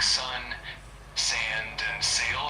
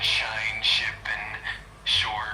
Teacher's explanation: the S sound is a bit sharper and more hissing while the sh sound is softer and more hushed